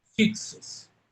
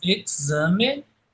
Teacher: Em um som mais puxado, um K surdo puxado para o S, e um K mais sonoro puxado para o Z.